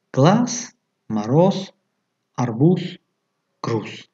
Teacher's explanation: дар охири калима зе бошад, чун се талаффуз мешавад. глаз, мароз, арбуз, груз менависем ва дар талаффуз глаз, мароз, арбуз, груз.